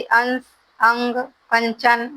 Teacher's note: अनुस्वार का उच्चारण स्थान नासिका है